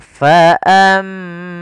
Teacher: [Musik] Di sini ada mim berharakat tasydid, kita baca dengan bacaan gunah. Caranya adalah menahan suara mimnya.